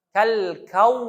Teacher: Kau ada waw dekat situ, kita pun muncung lah.